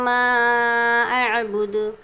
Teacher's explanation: یہاں پر بھی مد کرنا ہے، 2 یا 3 الف کی مقدار. عین کو نرمی کے ساتھ ادا کریں گے، جھٹکا نہیں دیں گے. دال میں ہم کو قلقلہ کرنا ہے.